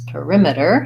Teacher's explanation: another request for the words perimeter and paramedic so perimeter has perimeter has second syllable stress